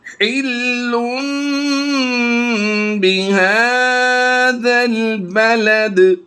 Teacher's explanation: تنوین کی حلن، لام دو پیش لن کی آواز کو لم میں بدلنا ہے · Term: اقلاب